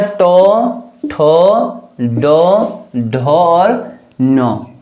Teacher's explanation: जो हमारा जो तालु है ऊपर साइड की, इसका पिछला भाग जो होता है वो प्रयोग में लाया जाता है इन व्यंजनों को बोलने के लिए। तो जो मूर्धन्य जो वर्ग होता है उसमें टो, ठो, डो, ढो और नो, ये चीजें आती हैं।